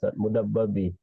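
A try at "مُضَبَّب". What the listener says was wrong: mudob, bukan mudab ya, mudob. Itu huruf dot.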